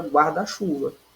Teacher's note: quando eu junto, não há nenhuma perda de fonema. Eu consigo ouvir aí a palavra guarda completa e chuva completa. Não há nenhuma perda de fonema.